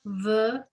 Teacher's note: Okay, and so here the emphasis is on the la on the last syllable because we have that double vowel going on under the hey.